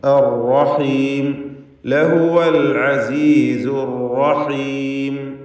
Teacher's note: ഷദ്ദുള്ള റാ ആയതുകൊണ്ട് വിറയൽ വരാതെ അർ എന്ന് വിറപ്പിക്കാതെ ശ്രദ്ധിക്കണം.